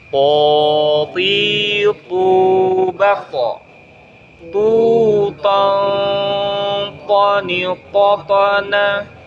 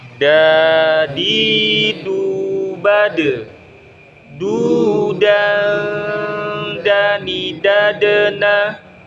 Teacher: ujung lidah menyentuh pangkal gigi seri depan atas